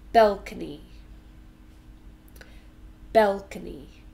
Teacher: And balcony, three syllables, balcony. We stress the first one.